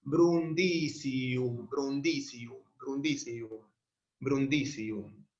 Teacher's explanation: Brundisium. La si en la penúltima es breve, el acento se va una más para atrás.